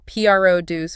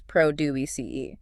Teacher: Produce can be tricky because the stress is on the first syllable for the noun, but the second syllable for the verb